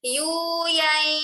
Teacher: Harusnya harus sampai ke rongga hidung bunyinya. Harus sampai bunyi suaranya ke rongga hidung sehingga sengau atau berdengung. Jadi kalau kita bacanya itu buka tutup hidung, buka tutup, buka tutup. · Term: idgham bi gunnah